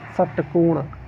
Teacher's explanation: षटकोण, षटकोण, षटकोण बोलेंगे तो मूर्धा में जाके जीवा टकराएगी।